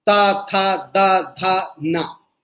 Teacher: जब हम तवर्ग का उच्चारण करते हैं तो इनमें हमारी जीभ दांतों से आकर टच होती है और दांतों पर हवा अवरुद्ध होती है, इसलिए हम इसे दंत से उच्चरित बोलते हैं।